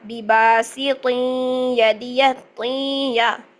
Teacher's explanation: ادغام ہو رہا ہے، ادغام مع الغنہ ، ٹھیک ہے، بباسط یدیہ، بباسط یدی ہم نے کیوں کیا،